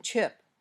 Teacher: your tongue pops open with a bit of a hissing sound your lips are a little bit rounded and the sound is voiceless